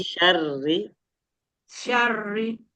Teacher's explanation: Tipis ya. Meskipun sebelumnya fathah tapi karena posisi r-nya apa? Kasrah. Jadi dia tipis. · Jadi tipis itu udah, dan getarannya nggak banyak-banyak banget. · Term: R-nya tipis